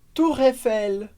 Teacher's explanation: com a liaison, juntando as duas palavras, que é algo muito comum em francês